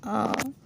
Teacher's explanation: पश्च स्वर जो पीछे के हिस्से से बोले जाते हैं